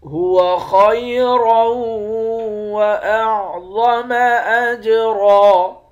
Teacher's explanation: هو خیرا واعظم اجرا، وا کو موٹا پڑھیں گے، جیم پر قلقلہ کریں گے، را کو موٹا پڑھیں گے، آخر میں دو زبر ہے، دو زبر کی تنوین میں جب وقف کرتے ہیں تو ایک زبر بن جاتا ہے · خا کو موٹا پڑھیں گے، را کو واو کے ساتھ ملا کر یہاں پر ادغام مع الغنہ کر کے پڑھیں گے، یعنی غنہ کے ساتھ پڑھیں گے۔